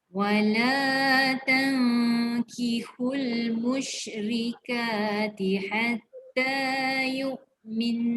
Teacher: Yu'min. Dengung 2 harakat. Ini kena tekan lama. Sebab dia nun sabdu.